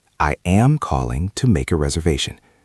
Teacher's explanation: The stress is on calling and reservation.